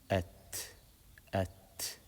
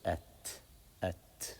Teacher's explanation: When we want to stop on it, we let out a little bit of air. We say at, so people can hear it. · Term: hams